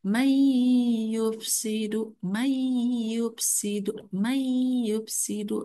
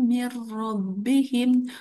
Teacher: memasukkan sebutan nun mati atau tanwin ke dalam huruf selepasnya dan dibaca secara idgham beserta dengung. Harus berdengung karena dengan guna ya. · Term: idgham bigunah